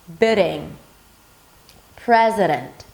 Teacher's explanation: this really light tap is exactly that D sound between two vowels in the middle of the word when it's unstressed.